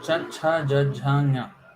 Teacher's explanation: So there the tongue touches the top at the center of the palate.